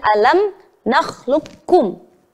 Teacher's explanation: huruf qaf kita leburkan kepada huruf Kaf maka yang yang sebagian besar tampak didengar adalah huruf Kaf Nya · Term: idgham mutaqaribain